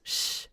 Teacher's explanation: So we have the th and then for the s I wanted to tell you like you have this sh it's almost a sh not exactly a sh it's in between the s frontal and the full on sh